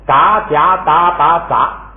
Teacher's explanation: 变一下这个送气不送气，就由清辅音变成了浊辅音